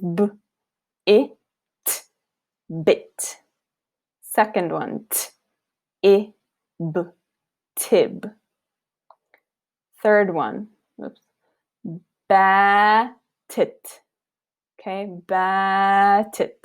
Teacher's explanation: notice that how i'm emphasizing the length of alif versus the shortness of kasra you need to differentiate between the lengths